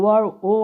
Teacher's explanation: ओ वर्ण का उच्चारण स्थान कंठ ओष्ठ होता है।